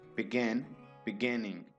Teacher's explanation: This verb has two syllables and the stress is on the final syllable